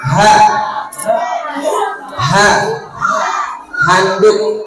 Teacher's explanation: yang keluar dari pangkal tenggorokan namanya ha bukan he